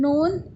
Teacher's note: زبان کا کنارہ اوپر والے دانتوں کے مسوڑے سے جب لگے